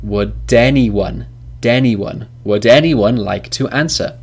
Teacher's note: the last consonant sound in would is duh, and the first vowel sound in anyone is eh, and they link together.